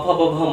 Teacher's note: ओष्ठ, यानी जो ओठ है बिना एक दूसरे को स्पर्श किए इसका उच्चारण हम नहीं कर सकते हैं।